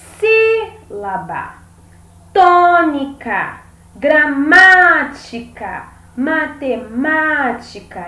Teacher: olha só sílaba tônica gramática matemática então você consegue perceber que todas essas palavras elas são acentuadas na antepenúltima sílaba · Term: proparoxítonas, proparoxítona